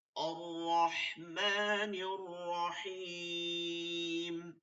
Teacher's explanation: এটা যখন মিলাই পড়বো তখন নার হবে, নার, নুনটা জবর ওই রতে গিয়ে ধরবে, ঠিক আছে? তখন এই আলিফটা পড়তেছি না।